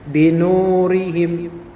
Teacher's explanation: nun dhammah ketemu dengan waw mati, maka dia menjadi mad tabi'i 2 harokat